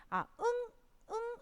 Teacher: 응이라고 했을 때 이 목구멍에서 동그랗게 잡혀 있는 소리가 나는 거예요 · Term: 목구멍 소리